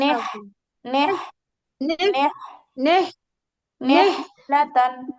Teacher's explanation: হাঁসের মতো একটা ফ্যাসফেসে আওয়াজ হয় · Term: হায়ে হত্তি